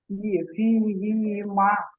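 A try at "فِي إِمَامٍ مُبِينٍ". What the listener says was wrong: হি বলছেন কেন? ফি ইমামিম মুবিন। ইয়া সাকিনের ডান দিকে জের থাকলে কি হয়? ইয়া মাদ্দা বলা হয়। ইয়া মাদ্দাকে সর্বদা একালিক পরিমাণ টান দিয়ে পড়তে হয়।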